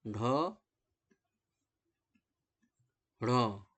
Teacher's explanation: एक और व्यंजन की बात की जा रही है जिसको कहते हैं उत्क्षिप्त, यानी जीभ को पहले ऊपर उठकर मूर्धा का स्पर्श करना होता है और फिर झटके से नीचे आ जाती है